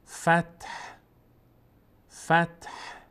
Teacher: فتح رو یک باریکی از صدای ه میاد. فتح فتح بدون این که حرکت بدیم به ت یا ه.